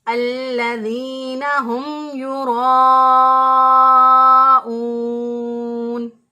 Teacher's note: اس مد کو 3 سے 4 الف کے برابر لمبا کریں گے، اسے چھوٹی مد کہتے ہیں